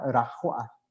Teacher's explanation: de repente en la palabra rajoa, la J se siente que suena 2 veces